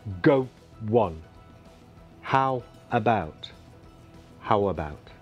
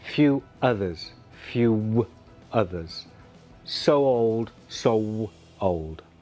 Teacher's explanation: we can add the sound w and build a bridge between the first and the second words